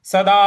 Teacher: इसमें जो दा है उसको दीर्घ खींचना है